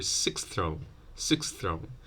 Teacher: Here you'd have a th and a s. You might delete both consonants to simplify it for sixth throne.